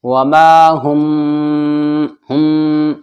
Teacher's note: میم ساکن کے بعد با آ گیا اخفاء شفوی ہوگا غننے کے ساتھ